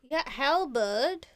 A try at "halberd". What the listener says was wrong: No, you said halbert.